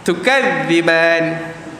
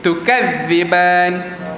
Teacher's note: huruf ta satu huruf yang bersifat angin tetapi angin dia lemah.